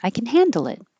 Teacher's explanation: Handle it and hold the final T.